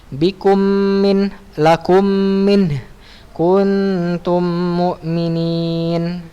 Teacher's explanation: masukkan mim sukun pada mim yang berharokat, ya, sehingga keduanya menjadi mim yang bertasydid, ya, yang digunakan dengan 2 harokat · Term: idgham shaghir